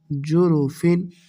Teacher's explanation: دیکھیے تنوین یعنی دو زیر کے بعد یہاں پہ ہا ہے جو کہ حروف حلقی ہے، حلق سے ادا ہوتا ہے، تو ہم یہاں پر غنہ نہیں کریں گے۔ جروفن، ہا الف زبر ہا، را دو زیرین، ہارن، جروفن ہارن۔